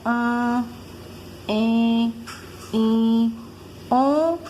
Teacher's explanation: O som é nasal porque esse som sai pelo nariz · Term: som nasal